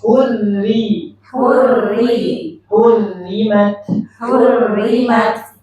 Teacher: perhatikan ro tebal tipisnya perhatikan kalau ro tasydidnya kasrah tipis